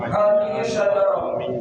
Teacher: As-syajarah ini alif lam as-samsiyah. Jadi lamnya tidak berfungsi, langsung ke shin.